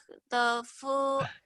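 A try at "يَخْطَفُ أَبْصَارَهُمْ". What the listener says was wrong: ya, Jawanya masih yak, jangan yak kotor kayak orang ngorok.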